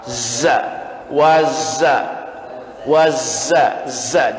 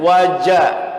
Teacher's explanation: Zai, ini zai dari ujung lidah tempel antara gigi yang atas dan yang bawah